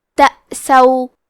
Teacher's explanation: الف پہ جزم ہے تو ہم حمزہ کو ظاہر کریں گے اور سین کو زبر سے پڑھیں گے